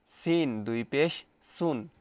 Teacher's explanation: সিন একটু হালকা বাঁশি মতো আওয়াজ হচ্ছে